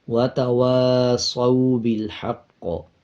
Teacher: واو کے اوپر زبر ہے اس کے بعد الف آ رہا ہے، جب زبر کے بعد الف آ رہا ہو 1 سیکنڈ لمبا کیا جاتا ہے